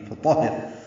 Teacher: را باریک ہو جائے گی کیونکہ پیچھے ہا کے نیچے زیر ہے